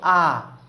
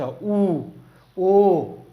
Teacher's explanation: केही स्वरवर्णहरू यस्ता छन् जसको उच्चारण गर्नुभयो भने ओठ गोलो हुँदैन, जस्तो आ, हैन? आ बोल्यो भने ओठ गोलो हुन्छ हुँदैन, तर उ बोल्यो भने के हुन्छ, ओठको आकार गोलो हुन्छ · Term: ओठको गोलाइको आधारमा